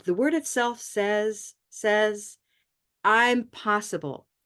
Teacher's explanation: I don't go down I just leave I leave it kind of neutral or slightly up